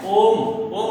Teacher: जैसे ओम, भो राम, हे कृष्ण, तो यहाँ पर क्या है, ओम, ओम बोलते हैं तो ओ को हम लंबा खींच करके बोलते हैं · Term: प्लुत स्वर